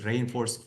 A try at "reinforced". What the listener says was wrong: reinforced, so not reinforced, but it should be reinforced. So the stress is not on re, but the main stress is on or, reinforced. So slight mispronunciation.